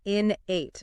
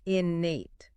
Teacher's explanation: people often put the stress on the second syllable, but it's actually the first syllable that gets emphasized. Innate, not innate.